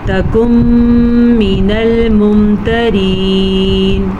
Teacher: تکن من الممترین، یہاں پہ ادغام بالغنہ کا قاعدہ ہو رہا ہے، نون ساکن کے بعد میم آیا ہوا ہے، تو ہم ان دونوں کو ملا کے غنے کے ساتھ پڑھیں گے